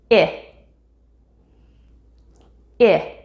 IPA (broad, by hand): ɪ